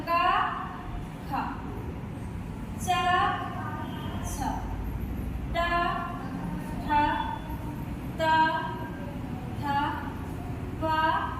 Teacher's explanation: ये जितने वर्ण इसमें आए हैं वो विवार भी होंगे, श्वास भी होंगे, आघोष भी होंगे